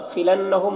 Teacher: وَلَأُدْ دال میں قلقلہ ہوگا، خِلَنَّهُمْ نون مشدد غنہ ہوگا، میم میں اظہار شفوی ہوگا